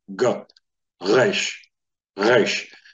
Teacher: forming the sound for R but from The position that the G is normally sounded from in the back of the throat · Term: guttural